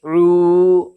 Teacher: उल्टा पेश बराबर होता है वाव मद्दा के, इसलिए उल्टा पेश को एक अलिफ के बराबर खींच करके अदा करेंगे।